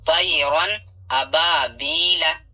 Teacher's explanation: यहाँ या साकिन से पहले जबर है, यालीन होगा। यहाँ अलिफ से पहले जबर है, अलिफ मद्दा थोड़ा खींच कर पढ़ना है। या साकिन से पहले यहाँ जेर है, या मद्दा होगा, इसे भी थोड़ा खींच कर पढ़ना है।